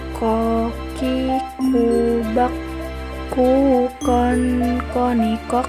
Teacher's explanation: keluar dengan menyentuhkan pangkal lisan kita dengan langit-langit bagian belakang